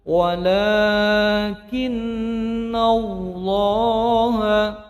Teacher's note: nunnya menjadi gunnah mendengung panjang 2 harokat